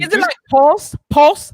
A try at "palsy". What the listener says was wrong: Like pulse, but with an A. Kind of like no, it's palsy. Right, but it's pronounced palsy.